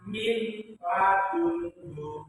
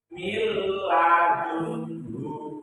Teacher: Cara membacanya tidak gabung. Jadi memasukkan suara nun mati atau tanwin ke huruf ro dan lam tanpa bergabung. Contoh, awalnya min ladunhu menjadi mil ladunhu, memasukkan tanpa bergabung. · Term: idgham bila guna